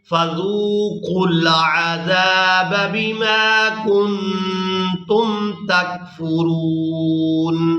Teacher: زال کو واو مدہ کے ساتھ ملاتے ہوئے کھینچ کر ادا کرنا ہے